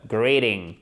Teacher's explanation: Le T, il est compressé et il se transforme presque en de.